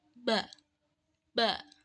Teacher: huruf ba itu keluar dari pertemuan kedua bibir secara rapat lalu dilepaskan untuk menghasilkan suara ba ba Nah yang kedua itu ada huruf